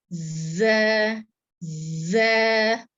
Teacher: जा में ना थोड़ी सी सख्ती के साथ सीटी की आवाज निकलती, इस तरह से ज ज।